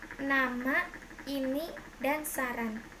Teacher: Konsonan N, kriterianya bunyi apicoalveolar nasal bersuara